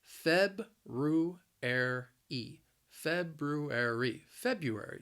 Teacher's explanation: the word has four syllables. The stress is on that first syllable